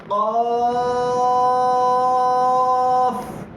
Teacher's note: یہ جو زبان کے اوپر جو چھوٹا سا ہوتا ہے اس کو جو کوا کہا جاتا ہے، وہاں سے آواز نکلے گی